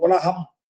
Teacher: அந்த ஊ என்ற முதல் எழுத்திற்கு பாருங்க, அது ஒரு மாத்திரை அளவு ஒலிக்கிறது